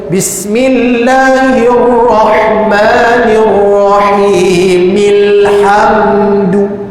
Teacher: Bismillahirrahmanirrahim. Mi ini disambungkan pada huruf lam pada ayat kedua ini. Sebab itu kita dengar orang baca Bismillahirrahmanirrahim.